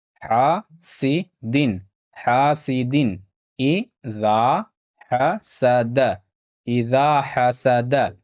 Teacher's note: یہاں پہ تنوین ہے اور تنوین کے بعد یہاں حمزہ ہے، یہاں پہ تنوین کا اظہار ہوگا